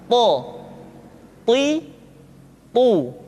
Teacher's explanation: To diucapkan dengan menyentuhkan ujung lidah dengan gusi-gusi dua gigi seri bagian atas. Sifat yang dimiliki oleh huruf to yang mesti nampak ketika kita ucapkan adalah sifat al-isti'la dan sifat al-itbaq.